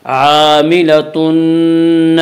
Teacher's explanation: تنوین کو نون سے ملا کر غنہ کے ساتھ پڑھیں گے ، اسے ادغام مع الغنہ ادغام ناقص کہتے ہیں۔ عاملتن، نون